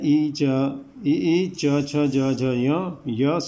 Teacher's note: ये तालु से निकलते हैं, तालव्य कहा जाता है। ई बोलते हुए देखिए आपकी जीभ कहाँ जा रही है।